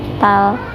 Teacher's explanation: di atas lam ada tasdid, jadi dibacanya ditekan tal